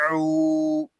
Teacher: عین حلق کے درمیان والے حصے سے ادا ہوگا